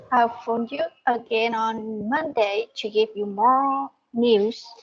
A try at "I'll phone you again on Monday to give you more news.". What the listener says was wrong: Okay, just put a little bit of intonation. And the problems is how do you get used to that? Get used to that intonation. As I said before, you need to listen to more native speaker conversation, right? And then you get used to it.